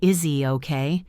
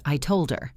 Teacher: We often drop the H sound in pronouns like he, him, her, and his when they are not at the start of a sentence. For example, instead of saying, "Is he okay?" we usually say, "Is he okay?" It sounds like the name Izzy. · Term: H deletion